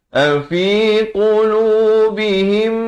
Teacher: Di sini mim mati bertemu mim, dengungkan 2 harakat.